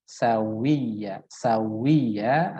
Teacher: Sehingga sekarang yang dibiasakan, yang harus kita biasakan adalah bagaimana mengucapkan waw itu dengan indima musyafatain atau dengan memonyongkan kedua bibir. Misalkan ketika fathah wa, ya, wa, tidak wa, ya, tidak wa langsung, tapi wa, ya.